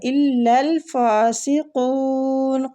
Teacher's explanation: قاف مستعلیہ پر پڑھیں گے